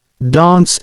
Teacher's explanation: the word dance is pronounced with a broad a